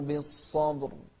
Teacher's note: شوف الصاد بالصبر، والباء مقلقلة، والراء أيضا مفخمة.